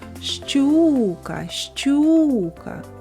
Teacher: сила голосу більше падає на звук у А це і означає що наголос падає на звук у